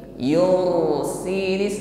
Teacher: ra sukun ini juga memiliki sifat tawassut. Jadi suaranya mengalir.